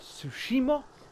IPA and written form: ˈtsuʃiˌmɑː (Tsushima)